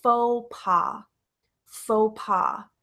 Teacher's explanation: it's not fox or folks it's not passe we don't pronounce the X we don't pronounce the S